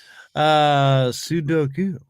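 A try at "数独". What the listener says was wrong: There's a U in the end.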